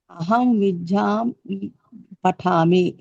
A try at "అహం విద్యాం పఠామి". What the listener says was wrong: విద్యాం కాదు ఇది మహాప్రాణం కాదు ఇది అల్పప్రాణం